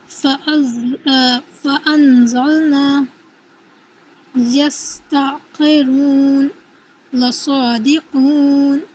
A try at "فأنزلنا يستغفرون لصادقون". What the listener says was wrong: اس میں تھوڑی سی اور آپ کوشش کریے سیٹی کی آواز لانے کی.